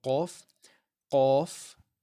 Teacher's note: It's not a throat sound. It's a back of the tongue sound, but it must not have any airflow to it.